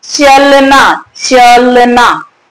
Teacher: तो जब इस अ का उच्चारण पूरा नहीं हुआ तो पूरा का पूरा जो जोर है, बल जो है, शक्ति कहां चली गई? च पर। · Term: बलाघात